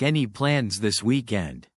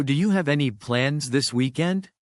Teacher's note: Rising intonation to show it's a question